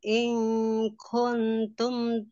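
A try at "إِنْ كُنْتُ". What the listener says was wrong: In kuntu, tidak ada mimnya.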